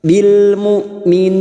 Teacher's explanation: Bil mu hamzah sukun, sifatnya siddah, jangan tertukar ain, jangan dibaca bil mu', tetapi cukup dibaca jelas dan tegas.